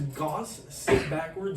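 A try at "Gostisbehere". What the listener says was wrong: Why are you saying sit backwards? Gostis. You can just pronounce it. It's not a difficult word to say.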